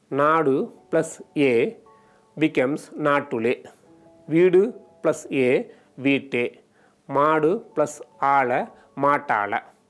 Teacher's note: When a noun ends with a shortened u preceded by a long vowel, its final hard consonants doubles before a case marker. For examples, nadu plus a becomes natule, veedu plus a veete, maadu plus ala matala.